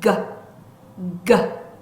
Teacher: G 하는 소리는 유지가 안 되는 소리. 자, 목을 잡고 G, G. 성대가 울리는 소리.